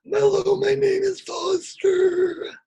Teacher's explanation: let's phonate as we take the breath in. Resembling a sort of gasp. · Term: ingressive speech